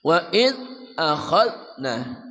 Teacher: dzal dari ujung lidah bersama ujung gigi di atas. Wa id, jangan mantul ya.